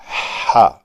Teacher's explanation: یہ سانس باہر نکالنا، اس کے ساتھ تھوڑی سی آواز پیدا کر دینا بڑا آسان ہے